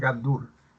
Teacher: En la primera palabra, gandul, la sílaba tónica es dul